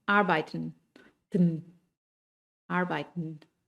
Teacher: muchas veces la EN al final de la palabra también, o la EN, la E casi no suena.